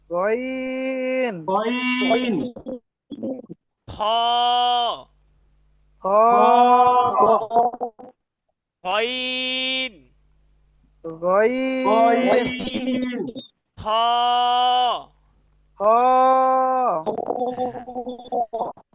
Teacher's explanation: হলকের শেষ হতে উচ্চারিত হয় গইন খ